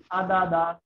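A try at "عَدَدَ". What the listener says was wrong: আচ্ছা, আইনে আরেকটু চাপ দিতে বললে আরো সুন্দর হবে ইনশাল্লাহ।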